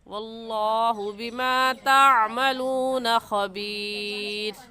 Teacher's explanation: और बिमा ताअमलूना, बिमा ताअमलूना में ता है, ता की जगह त्वा पढ़ना दुरुस्त नहीं है, त्वाअमलूना गलत है और ताअमलूना पढ़ेंगे। आइन को हलक के दरमियान से निकाल कर पढ़ेंगे · लफ्ज़ अल्लाह को पुर यानी मोटा करके पढ़ेंगे। और मोटा करने का तरीका कि दोनों होंठ गोल हो जाए। और बिमा ताअमलूना, बिमा ताअमलूना में ता है, ता की जगह त्वा पढ़ना दुरुस्त नहीं है, त्वाअमलूना गलत है और ताअमलूना पढ़ेंगे।